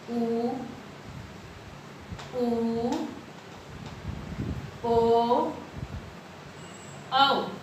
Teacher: वृत्त का मतलब होता है एक सर्कल, गोल। अर्थात होठों की आकृति कैसी हो जाती है? गोल हो जाती है। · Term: वृत्तमुखी